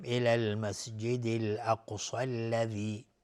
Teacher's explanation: الاقصى قاف اینجا قلقله میخواد چون ساکنه و قاف و صاد هر دو از حروف استعلا اصلا غلیظ تلفظ میشن و الف هم تابع الفی که بعد از صاد قرار گرفتن باز غلیظ طرف میگیم.